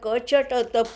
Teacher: प म्हणताना ओठाचा स्पर्श होतो, त म्हणताना दातातला स्पर्श होतो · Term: स्पृष्ट